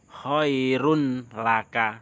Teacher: Ada tertulis khairun laka tetapi dibaca khairul laka. Ini disisipkan karena 'lam' ini adalah huruf dari idgham bilagunnah. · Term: idgham bila ghunnah